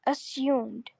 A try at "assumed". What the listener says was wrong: It's not assumed. It's assumed. and then s and then oo. It's oo. Assumed. There's no y sound. A lot of people see this u and then they think that they have to introduce or produce this y sound, but that's not right. Assumed.